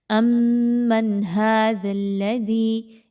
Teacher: ایک تو یہ کہ اس میں میم مشدد کا غنہ موجود ہے، تو آپ کو کیا معلوم ہوا کہ میم اور حمزہ کو، یعنی ان کو آپس میں ملاتے ہوئے مضبوطی کے ساتھ آپس میں ملائیے اور میم مشدد کا غنہ کرتے ہوئے آواز کو ناک میں لے کر جائیے